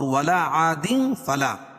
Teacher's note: تنوین کے بعد حروف اخفاء کی 15 حرفوں میں سے فا ہے تو یہاں ناک میں آواز کو چھپا کر پڑھیں گے، یہاں غنہ اور یہاں اخفاء۔ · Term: اخفاء حقیقی